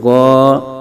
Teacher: الف زبر غا، غین کو حروف مستعلیہ ہے پر پڑھیں گے، آگے الف مدہ ہو رہا ہے، ایک الف تک کھینچ کے پڑھیں گے